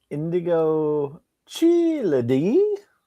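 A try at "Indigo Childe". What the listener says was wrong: No, it's the Child. Is that how you pronounce things when you're in your normal course of life? You just sound it out very slowly and add syllables?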